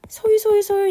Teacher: 리을은 울림소리 중에서도 이 이응은 비음이었고 리을의 경우는 유음이죠. 유음의 특징이 뭐예요? 흐르는 듯이 나는 소리죠.